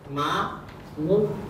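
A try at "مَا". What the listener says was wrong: মিম আলিফ ফাতা টান হবে তো মিম আলিফ ফাতা মা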